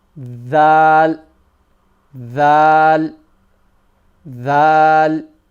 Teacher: the tip of your tongue comes slightly out from the mouth and touches the edge of the top teeth